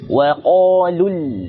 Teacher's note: ketika bertemu hamzah wasal dia tidak dibaca panjang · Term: bacaan sambung